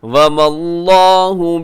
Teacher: یہاں لفظ اللہ کو موٹا پڑے گا کیونکہ اس سے پہلے میم کے اوپر زبر ہے